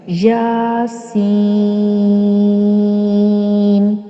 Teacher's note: اس میں یا زبر الف یا جو ہے وہ مد اصلی ہے، اور سین میں سین زیر یا جو ہے وہ حروف مدہ ہے جس کے بعد سکون آ رہا ہے، یعنی یہاں مد لازم حرف مخفف واقع ہو رہا ہے، اس لیے یا کو ایک الف یا 2 حرکات کی برابر اور سین کو 3 الف یا 6 حرکات کی برابر لمبا کر کے پڑھیں گے